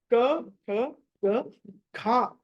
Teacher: ఖ అన్నది మహా ప్రాణం దాన్ని ఒత్తి పలకాలి